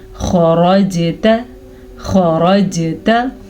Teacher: खरजता, जीम पे साकिन है तो जीम पे कलकला होगा, जीम पे झटके की कैफियत होगी, यानी कि खरजता। ता को लंबा नहीं करेंगे क्योंकि ता पे सिर्फ ज़बर है, ना के खड़ी ज़बर। बाज़ लोग हर आखिरी लफ्ज़ को जाने अनजाने में लंबा कर देते हैं, यानी कि खरजता ऐसे करके पढ़ते हैं, तो वो गलत है।